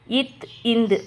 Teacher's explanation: மேல்வாய் பல்லுடைய அடிய நாக்கு நுனி பொருந்ததால பிறக்கிறது